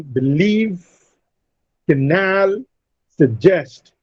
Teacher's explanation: Now these words receive a stress on their second syllable. Leave is stressed in canal, nal is stressed in suggest, jest is stressed.